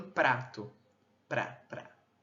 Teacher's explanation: nós temos um bloqueio rápido e breve, né, a passagem da corrente de ar na parte frontal. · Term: consoante TEP